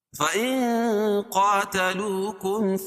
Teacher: اخفاء حقیقی کیونکہ نون ساکن کے بعد حروف اخفاء کے 15 حرفوں میں سے قاف ہے تو یہاں ناک میں آواز کو چھپا کر پڑھیں گے